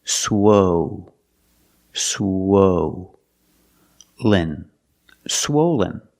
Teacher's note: for the first syllable use the long o like no and go swo swen swollen the second syllable is not stressed it sounds